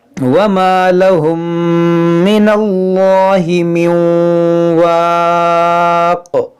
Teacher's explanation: میم ساکن کے بعد دوسری میم ہے تو یہاں پر ادغام شفوی ہوگا، یعنی یہاں پر بھی غنہ ہوگا